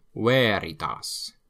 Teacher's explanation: V before vowel, like you probably noticed, is pronounced like a W.